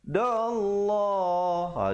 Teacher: Di sini kita jumpa lafzul jalalah yang datang sebelumnya baris atas kena baca tebal. Jangan pula kita baca nipis.